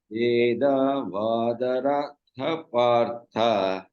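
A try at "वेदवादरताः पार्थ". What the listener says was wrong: Now you did ratha. So visargas. Rataf partha.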